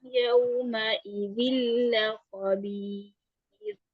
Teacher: अगर रा साकिन आ जाए और उससे पीछे या साकिन हो तो फिर रा बारीक पढ़ा जाता है